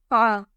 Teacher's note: Ain will come out from the middle of the throat.